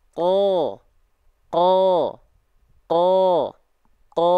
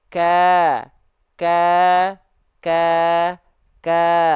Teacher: kalau qaf dia nggak keluar nafas. Tapi kalau kaf dia ada percikan-percikan nafasnya.